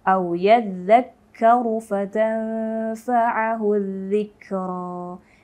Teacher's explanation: Jadi pengucapan huruf zal itu memang sangat lembut. Tapi karena di sini ada tasdid, tanda tasdid atau syiddah, maka zalnya ini sedikit lebih tegas cara membacanya.